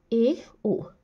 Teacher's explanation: half close यानी कि अर्ध समृत है यानी कि जो मुख द्वार आधा बंद है उसका रोल ज्यादा है इनके उच्चारण में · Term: अर्ध संवृत